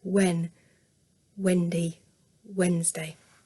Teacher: this is a moving sound. My lips move, they release as I'm making the sound w.